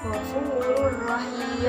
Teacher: Maka cara membacanya yaitu memasukkan huruf sebelumnya kepada huruf idgham bilaunah sehingga bacanya sedikit jelas dan tidak disertai dengan dengung